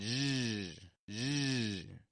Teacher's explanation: I'm voicing the sh position